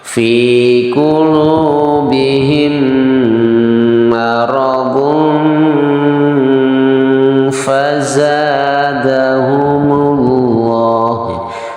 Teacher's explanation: tanwin bertemu dengan fa, hukumnya adalah ikhfa. Cara membacanya didengungkan di rongga hidung, ya. Dan huruf fa-nya siap untuk dikeluarkan ketika sedang didengungkan.